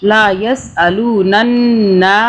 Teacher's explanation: نون کے آگے الف آ رہا ہے تو ہم نون کو ایک الف کے برابر کھینچیں گے